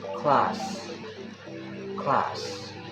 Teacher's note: the sound S is a voiceless alveolar fricative. It is produced by directing air through a narrow passage between the tongue and the alveolar ridge.